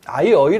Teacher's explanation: 당시 아이와 어이는 반모음 이를 가진 하향 이중모음이다. 그럼 이가 아이, 그 다음에 어이, 이렇게 얘가 뒤에 나타나기 때문에 뒤에 나타나는 거죠, 하향 이중모음.